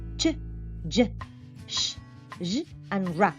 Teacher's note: the blade or tip of the tongue is used just behind the alveolar ridge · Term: palato-alveolar